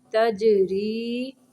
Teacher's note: جیم کو قلقلہ کرنا ہے